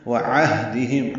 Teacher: ہم میں میم ساکن پہ اظہار شفوی ہے، لِأَمَانَاتِهِمْ لام کو جلدی پڑھنا ہے، حمزہ کو بھی جلدی پڑھنا ہے، میم اور نون کو 2 حرکات لمبا کرنا ہے، لِأَمَانَاتِهِمْ ہم میں میم ساکن پہ اظہار شفوی ہے، وعہدہم عین وسط حلق سے، ہا اقصی حلق سے ادا ہوتے ہیں